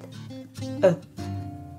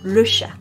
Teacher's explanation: It is quite close to the sound /œ/, but with the tip of the tongue at the centre of the palate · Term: silent e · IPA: /ə/